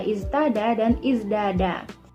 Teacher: suara ta mahmusah ke dal majhurah untuk menyerupai sifatnya zai yang majhurah, yaitu pada kata iztada dan izdada. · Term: asimilasi sifat